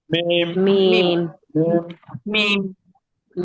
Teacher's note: মিম চার আলিফ টান হবে কয় আলিফ চার আলিফ দেখেন মিম ঠিক আছে মি চার আলিফ